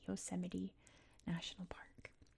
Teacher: We pronounce T's as D's or we just drop the T sound. In this case, it's a D.